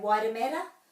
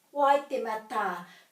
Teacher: Wai, te, ma, ta. And you can hear that I'm putting my emphasis for the word on the ta. Waitemata, because there's a macron.